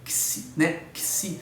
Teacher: nós temos aí esse fonema xi, né? Xi, como se fosse um KS